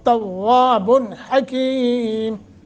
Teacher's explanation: توا مضبوطی کے ساتھ، مشدد ہے واو کو موٹا اور 1 الف کے برابر مد بھی ہے